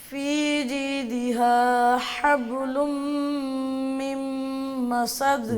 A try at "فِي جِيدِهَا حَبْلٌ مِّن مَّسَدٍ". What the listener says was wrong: با پہ شد نہیں ہے ساکن ہے حبل حبل نہیں بولنا حبل بولیں